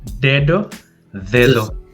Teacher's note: la lengua toca los dientes incluso en medio de los dientes